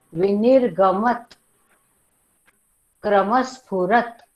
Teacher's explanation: हा जो त अर्धा दिसतोय क्र च्या अलीकडे आणि पुढच्या क च्या अलीकडे, त्याचा उच्चार अर्धाच करायचा.